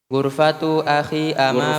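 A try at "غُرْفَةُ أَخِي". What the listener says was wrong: Ghurfatu akhi, jangan panjang.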